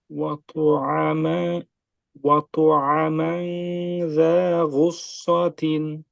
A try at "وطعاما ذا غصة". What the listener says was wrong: আচ্ছা, এখানে আইনটা মাদ হবে, এখানে আইনটা হচ্ছে আলিফ মাকসুরা দিয়ে, তো এটা ফ্রন্টের কারণে আর কি এটা আসেনি। وطعاما ذا غصة